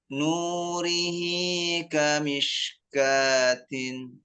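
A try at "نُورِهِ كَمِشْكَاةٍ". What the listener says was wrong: Nah, ini Ustaz, hati-hati. Kalau kita punya shin itu nggak usah diangkat kamish. Nurihi kamish. Maksimalkan di dalam mulutnya. Nurihi kamishkatin.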